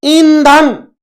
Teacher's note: ई जो है वो हम नाक और मुंह से उसका उच्चारण हो रहा है, यानी ई अनुनासिक स्वर है।